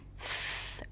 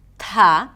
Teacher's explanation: the air is blocked, it doesn't flow out freely like we expect from the TH sound